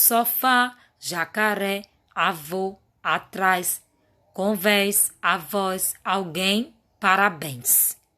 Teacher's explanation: Observe que a sílaba tônica é a última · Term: oxítona